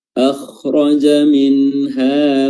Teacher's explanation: Akhraja minha, nun sukun di sini bertemu dengan huruf ha, hukumnya adalah izhar halqi, nunnya dibaca jelas, ya, dan halqi diambil dari makhraj yang keluar darinya huruf ha.